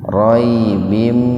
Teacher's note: Roy bim idgham bigunna, kasrotain ketemu dengan mim, jadi diidghamkan membacanya itu, dimasukkan ke mim dengan mendengung.